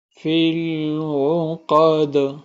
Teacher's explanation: دال پہ ہم قلقلہ کریں گے اور قاف کو ہم موٹا پڑھیں گے